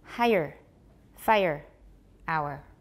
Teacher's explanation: Each one has a diphthong plus an er sound.